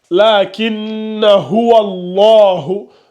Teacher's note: Notre Hamzatul Wasl qui est là. Et la Hamzatul Wasl, quand elle est au milieu, elle sert de liaison. Donc, on passe de wa au la.